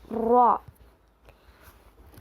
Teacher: زبان کے سائڈ کے حصوں کو لیفٹ اور رائٹ سائڈ کے گمز کو لگانے سے را ادا ہوتا ہے. را پر زبر ہے نہیں کھینچیں گے.